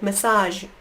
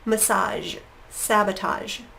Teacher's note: And in that case, it's getting really gentle with massage. That zh is very quick that your voice is on. It's almost a sh sound, but it does have your voice. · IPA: /ʒ/